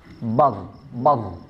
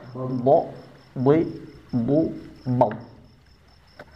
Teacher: Dari segi nafas dia bersifat jahr. Jelas. Jadi d jangan ada nafas yang keluar.